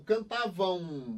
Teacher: nasal porque o som sai pela boca e pelo nariz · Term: ditongo decrescente nasal